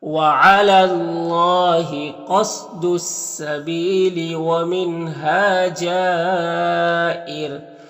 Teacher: را کو باریک پڑھیں گے، کیونکہ را ساکن سے پہلے زیر ہے تو باریک پڑھیں گے